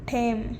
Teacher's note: ಗುಲ್ಬರ್ಗ ಕನ್ನಡದಲ್ಲಿ ಅಲ್ಪ ಪ್ರಾಣಗಳು ಮಹಾಪ್ರಾಣಗಳಾಗಿ ಪ್ರಯೋಗಗೊಳ್ಳುತ್ತವೆ